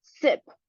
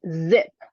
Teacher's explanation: two pictures to show the visualized information about voicing bar for the word sip with the voiceless consonant and the word zip with the voiced consonant Z